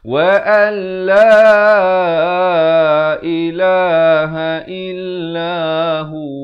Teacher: Dan kalau waqaf, hu itu dipanjangkan 2 harakat.